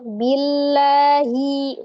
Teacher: ketika sebelum lafu jalalahnya dia ada huruf berharakat kasrah maka dia dibaca dengan tipis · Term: tipis, tarqiq